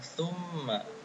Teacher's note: Yang pertama adalah tsumma. Adalah bacaan gunnah karena terdapat mim bertasydid.